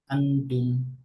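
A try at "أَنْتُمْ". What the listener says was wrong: না, ইকফা সহ। আনতুম। টাংটা আরেকটু ঝুলায়, ঠিক আছে, হ্যাঙ্গিং অবস্থায়, তায়ের মাখরাজের কাছে টাংটা, হ্যাঁ?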